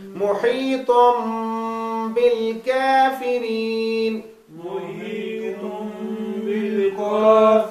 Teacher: نون تنوین کو چھوٹی میم سے بدلیں گے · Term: اقلاب